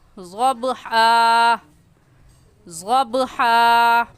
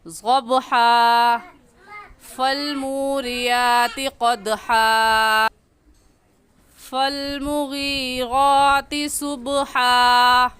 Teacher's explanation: با حروف قلقلہ میں سے ہے، با پر قلقلہ کر کے پڑھیں گے، اور قلقلہ مطلب اس کو ہلا کر پڑھیں گے، حرکت دے کر پڑھیں گے